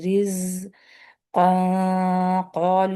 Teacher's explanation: رز قالو، یہاں پہ اخفا موٹا ہوگا ، قالو، کیونکہ ایک تو قاف بھی یہاں، تو قاف سے